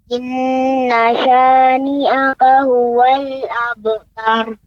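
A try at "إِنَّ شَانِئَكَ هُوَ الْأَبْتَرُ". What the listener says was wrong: Jadi catatannya untuk Adik, ya, pengucapan ro yang ditebalkan, ya, yang ketika berhenti, maka ya, tadi agak sedikit lagi lebih ditebalkan sehingga benar-benar dia ro, ya, pengucapannya tepat, ya. Misalnya wanhar, har, ya, abtar, tar, ya, tidak abtar atau wanhar, ya.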